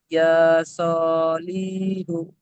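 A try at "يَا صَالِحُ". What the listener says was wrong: লি টান দেওয়া যাবে না ভাই, এক্ষুনি আপনি বললেন লাম নিচে খাড়া জের এসছে, জের হারাকাত। তো ইয়া সলিহু।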